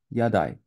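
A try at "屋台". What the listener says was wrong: Yatai. Weirdly enough, it does not have Rendaku.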